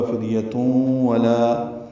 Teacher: تنوین کے بعد واو آنے کی وجہ سے ادغام ناقص ہے، غنہ ہوگا. فدیتون ولا، واو ہونٹوں کی ناتمام گلائی سے ادا ہوگی.